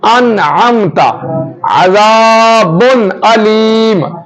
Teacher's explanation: نون ساکن اور نون تنوین کو خوب ظاہر کر کے پڑھتے ہیں، یعنی ان کا جو مخرج ہوتا ہے ادائیگی وہاں سے ہوگی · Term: اظہار